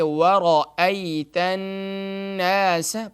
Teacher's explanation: را کو فل ماؤتھ پڑھیں گے، یعنی کہ موٹا کر کے پڑھیں گے